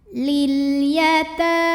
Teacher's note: ta matobi'i muqaddar karena ada baris fathah panjang di atas huruf ta. Cara bacanya dipanjangkan 2 harokat.